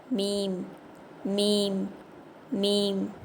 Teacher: இந்த எழுத்து உதடுகளின் வெளிப்புற பகுதியை சேர்த்து ஓதணும்